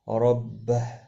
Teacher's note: را زبر کی وجہ سے پر پڑھا جائے گا، ہا ساکن پڑھا جائے گا وقف کی صورت میں، اور ملانے کی صورت میں ایک الف کی مقدار کے برابر کھینچ کر پڑھا جائے گا۔